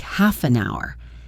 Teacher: Half an hour is a great example of linking. We don't pronounce the H in hour, so the F sound at the end of half links directly to the U sound in hour